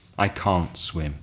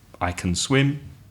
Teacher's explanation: So you don't really hear the t sound very often, but you do hear, usually, the difference in the vowel sound. The negative vowel sound is longer.